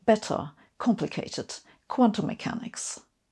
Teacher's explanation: In American English, it's quite common to use tap T's that sound kind of like D's, better, complicated, or kind of mumble over the T's altogether, as in quantum mechanics. In British English, the T's tend to be much clearer pronounced